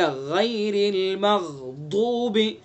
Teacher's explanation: یا حرف لین ہے، یہ بالکل معروف پڑھیں گے